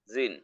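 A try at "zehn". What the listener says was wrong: নট জিন। সেন। সেন। জিন না, আমি উচ্চারণ করি কিভাবে সেটা খেয়াল করেন। সেন। হ্যাঁ উচ্চারণ হলো সেন, নট জেন। উচ্চারণ হলো জেড এর উচ্চারণ হলো সেট।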